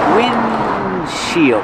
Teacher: you don't really hear the D because it's a stop D